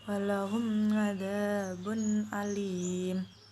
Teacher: Suara nun mati jelas tanpa dengung dan sama sekali tidak menjadi samar. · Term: izhar